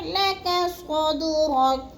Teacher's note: صاد کو پر کر کے پڑھنا ہے اور دال کو ہلانا ہے کیونکہ یہ حروف قلقلہ میں سے ہے